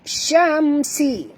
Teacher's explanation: mim mati bertemu sin, tak boleh dengung, izhar ya. Izhar syafawi.